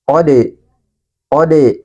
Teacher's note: Huruf dal dalam keadaan sukun atau mati, maka huruf dal ini harus dipantulkan.